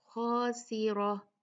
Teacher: را پھر ہیوی ہوگا کیونکہ اس پہ فتحہ ہے